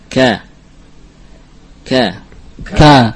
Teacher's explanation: Ada i'timad yang kamil, ada tekanan yang sempurna pada makhraj kaf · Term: syiddah